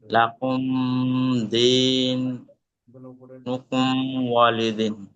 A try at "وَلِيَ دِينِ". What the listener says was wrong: ওয়ালি আছে শুধু? واو زبر وا لام زر لي. اولي يا زبر. لام زر لي اولي يا زبر يا اولي يا. দাল ইয়া জের দি, নুনটাকে সাকিন করব দিন। লাকুম দিনুকুম ওয়ালিয়া দিন, ওয়ালি দিন নয়, ওয়ালিয়া দিন।